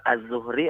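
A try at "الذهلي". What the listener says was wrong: Az-Zuhli. Dal ha lam ya. Bukan Az-Zuhri, tapi Az-Zuhli.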